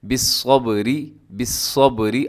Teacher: آگے جو را ہے وہ باریک پڑھی جائے گی، کیونکہ را کے نیچے جب کوئی چیز ہوتی ہے تو را باریک ہو جاتی ہے۔ · صاد موٹا ہے، اور اس کو آپ نے، ایک تو اس میں سیٹی ہوتی ہے، دوسرا آپ نے اس کو موٹا پڑھنا ہے، اس کو بالصبر نہیں پڑھنا۔